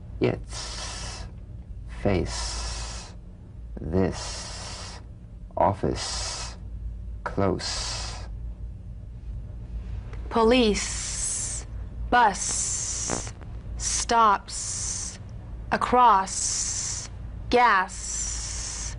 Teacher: Z unvoiced s sound fricative tongue to gum Ridge the S is like the Z except it's unvoiced so it's the same tongue placement as the Z the Z the S is like a gentle escape of steam